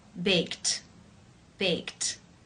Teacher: in the infinitive form to bake is the k k sound it's unvoiced therefore the Ed D is pronounced t unvoiced with the T sound